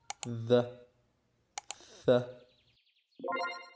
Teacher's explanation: وهو التقاء طرف اللسان مع الأسنان لإنتاج أصوات مثل ذ ث. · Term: Dental